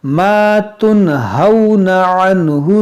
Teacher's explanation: یہاں نون ساکن کے بعد ہا ہے، یہاں پر اظہار کریں گے